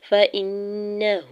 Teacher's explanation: فَإِنَّهُ، فا کے زبر کو جلدی سے ادا کرنا ہے، حمزہ کے زیر کو نون مشدد کے ساتھ ملاتے ہوئے نون مشدد پہ غنہ کریں گے اور ہا کے اوپر الٹا پیش بھی ہے اور مد منفصل بھی ہے۔